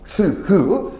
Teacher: 폐에서 소리를 입 밖으로 낼 때 입 안에서 마찰이 일어나는 소리가 됩니다. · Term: 마찰음